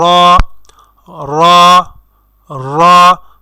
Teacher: আমরা যখন র উচ্চারণ করব তখন আমাদের মুখের মধ্যে একটা ভাইব্রেশনের সৃষ্টি হবে। তো যখন ভাইব্রেশনের সৃষ্টি হবে তখনই আপনি বুঝবেন যে আপনার হরফ উচ্চারণটি শুদ্ধ হচ্ছে।